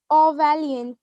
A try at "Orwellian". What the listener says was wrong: Not val, is well. Orwellian. Well, not so well and val. They are very different sounds.